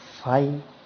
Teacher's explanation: Some people pronounce this as a single syllable, but I pronounce it as two